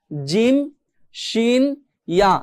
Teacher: জিহ্বার মাঝখান মানে এই জিহ্বার একদম গোড়াও না একদম আগাও না, মাঝখানের জায়গাটা থেকে যদি আমরা উপরে তালুর সঙ্গে লাগিয়ে এই 3টি হরফ উচ্চারণ করি, তাহলে এই 3টি হরফের সঠিক উচ্চারণ আমরা করতে পারবো, জিম শিন ইয়া। জিহ্বার মাঝখানটা কিন্তু উপরে তালুর সাথে লাগতেছে